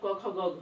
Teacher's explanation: ये सब जो है वो कंठ कोमल तालु से बोले जाते हैं, जिसके कारण इन्हें जो है वो कंठ ध्वनि का नाम दिया गया है।